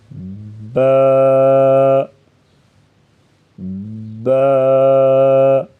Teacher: با کی ادائیگی میں ہونٹوں کے گیلے حصے کو سختی سے ملا کر باریک آواز میں پڑھیں گے، با، با۔ تھوڑا سا کھینچیں گے، با، زیادہ نہیں کھینچیں گے۔